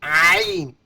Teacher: عین کا مخرج حلق کا وہ حصہ جو درمیانی ہے